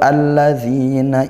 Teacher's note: al bertemu huruf syamsiah, huruf lam. Nah, sehingga kita baca idgham dibaca langsung masuk ke huruf syamsihnya